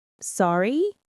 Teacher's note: you might just say, sorry, with a rising intonation.